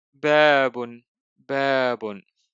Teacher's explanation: we have also a long vowel alif after the letter ba.